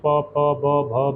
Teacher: संपूर्ण पा, भा और मा का उच्चारण होठों से किया जाता है